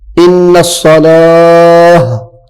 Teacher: تا کے اوپر جب وقف کریں گے تو یہ ہا میں بدل جائے گی